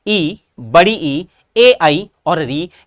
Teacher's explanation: ऐसे स्वर जिनके उच्चारण में जीभ का अगला भाग काम आता हो उन्हें हम कहते हैं अग्र स्वर